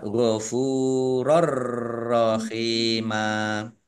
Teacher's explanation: Fathah tanwin bertemu dengan huruf ro, bacaan idgham bila gunnah. Masuk dengan tidak mendengung. Ya. Masuk ke huruf ro, ditandai ro-nya ada tasdidnya, tanwinnya tidak dibaca, ya, tapi tidak mendengung.